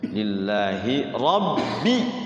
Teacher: Lillahi rabbi tuh rnya tafkhim tebal